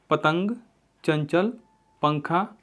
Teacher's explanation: अनुस्वार एक नासिक की ध्वनि है। अंग के उच्चारण में हवा केवल नाक से निकलती है।